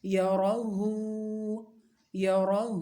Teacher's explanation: خا یا زبر خی را یا زبر رین خی رین خی رین یا زبر یا خی رین یا را زبر را یا را ہا الٹا پیش ہو یرہ یرہ را کو موٹا پڑھنا ہے ہا کو سینے سے متصل حلق سے نکالنا ہے اور ہا الٹی پیش ہو ہے ایک الف کے برابر کھینچ کر پڑھنا ہے